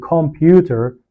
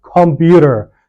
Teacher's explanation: And instead of saying computer, you say computer. So when the T comes between two vowels, you pronounce it like a light D. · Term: flap T